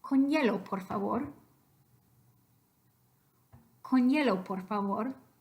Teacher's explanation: If you stop on the N of con, but you're ready to say hielo, con hielo, you're actually getting a ny in there. So the allophone that you would write between brackets there is the ny.